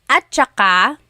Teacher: technically it's spelled at saka, but when it's pronounced, remember the TS combination, it makes that ch sound